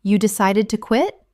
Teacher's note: you might simply mirror them by saying, You decided to quit? utilizing a rising intonation.